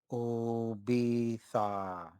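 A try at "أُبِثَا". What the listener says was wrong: There you go. Perfect.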